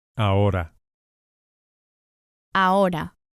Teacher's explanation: we go straight from the A to the O.